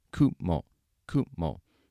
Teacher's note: In fact, even the pitch accent is high, low.